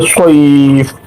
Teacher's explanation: লিনের হরুফকে এক আলিফ পরিমাণ টানা হলো। আর ফাকে সাকিনের মত উচ্চারণ করা হলো